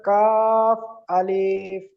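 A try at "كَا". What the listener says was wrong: আলিফ, ক আলিফ টান আছে? তাহলে আপনি টান দিয়ে ফেলছেন।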